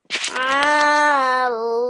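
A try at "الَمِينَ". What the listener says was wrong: No thick sound of the lam. Alamina.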